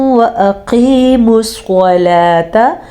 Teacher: قاف کو موٹا پڑھیں گے، صاد کو موٹا پڑھیں گے کیونکہ یہ حروف مستعلیہ میں سے ہیں